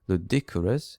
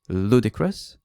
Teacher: So I said, okay, the word is pronounced ludicrous, the stress is on the first syllable